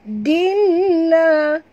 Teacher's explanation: tanwin baris dua di bawah bertemu dengan lam, masuk ke dalam bunyi lam ini tapi tidak boleh dengung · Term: idgham bila gunnah